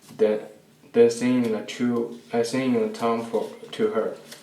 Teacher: he says the D instead of a TH for then. He says din.